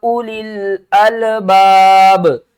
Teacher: ये वाव को हम नहीं पढ़ेंगे, उलिल पढ़ेंगे